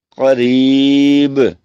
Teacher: تو با بھی جب ساکن ہو تو اس پہ کلکلا ہوگا